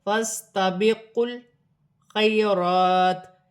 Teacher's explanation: یا ساکن سے پہلے زبر یالین بن رہی ہے، اسے کھینچا نہیں جائے گا · سین ساکن ہے، فا کی حرکت کے ساتھ ملا کر پڑھا جائے گا۔ واو خالی ہے، دونوں الف خالی ہیں، انہیں پڑھا نہیں جائے گا۔ لام ساکن ہے، لام کو قاف کی حرکت کے ساتھ ملا کر پڑھا جائے گا، جیسے فَاسْتَبِقُوا الْخَيْرَاتِ۔